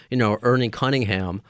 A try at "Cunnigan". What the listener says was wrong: Cunningham. There's no H's. There's no H. You got to look that name. Yes, there's no H's.